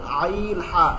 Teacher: আইন হা হলকের মধ্যখান হইতে আইন হা, এখানে আঙ্গুল দেন, আইন হা।